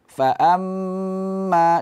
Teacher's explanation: ada dengung di mim tasdid sama dengan Nun tasdid tadimaat di sini juga ada Ikfa suara mengalir ke hidung barengan